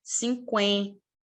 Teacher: esse n a única coisa que ele faz é tornar o som do é nasal